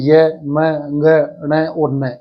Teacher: यह मैं ग ण और न ये जो पंचम वर्ण है प्रत्येक वर्ग के प्रत्येक फैमिली के जो लास्ट वाले पंचम जो वर्ण है इनका उच्चारण स्थान नासिका होता है